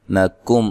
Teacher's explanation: تلو لو و مدہ ہے. نکم، کاف کو باریک پڑھنا ہے، میم ساکن کا یہاں اظہار ہے